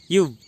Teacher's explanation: கீழ் இதழும் மேல்வாய் பல்லும் இணைவதால் பிறக்கும் எழுத்து